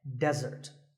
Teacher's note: here the stress is on the first syllable